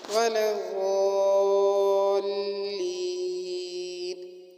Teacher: ولا الضالین میں ضاد موٹا پڑھا جائے گا اور کھینچ کر پڑھا جائے گا، اور لام کے اوپر اور ضاد کے اوپر شد ہونے کی وجہ سے اس کو مضبوطی کے ساتھ پڑھا جائے گا.